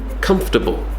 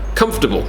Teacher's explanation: The or is removed.